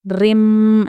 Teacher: मीम साकिन के बाद या तो मीम आएगा या तो बा आएगा, ان دونوں صوتوں میں ہم کو غنہ کرنا پڑے گا، لیکن یہاں پر کیا ہے را ہے، اس لیے ہم کیا کریں گے، میم کی آواز کو جلدی پڑھیں گے، یعنی کہ غنہ نہیں کریں گے